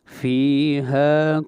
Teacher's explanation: فی کو بھی لمبا کریں گے ایک الف کے برابر اور ہا کو بھی ایک الف کے برابر لمبا کریں گے